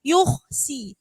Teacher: sin itu huruf tipis, jangan ikut katut khoknya tebal